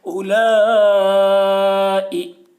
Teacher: اولا، اوپر مد، اولا، حمزہ زیر ای، حرف مد کے بعد حمزہ اسی کلمہ میں ہے، اس لیے مد متصل ہوا، مد متصل کو 3 یا 4 الف کے برابر کھینچ کر پڑھیں گے۔ اولائی، حمزہ کے نیچے زیر ہے، زیر کو جلدی پڑھیں، تھوڑا بھی نہ کھینچیں، معروف پڑھیں، مجھول آواز سے بچیں۔